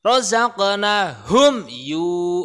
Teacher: Rozaqnahum yu itu namanya idhar syafawi. Ada mim mati bertemu dengan huruf ya, harus jelas bacanya.